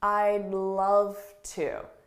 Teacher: So notice how soft that D is, I'd. But when I say it with a word after it, the sounds very much blend together